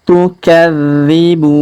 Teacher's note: Huruf dzi kita tahan dan tekan karena terdapat tanda tasdid